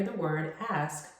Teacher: when you are pronouncing the word ask you are enunciating the S-K and not substituting the S-K with an X. You want to ask a question, not ax a question.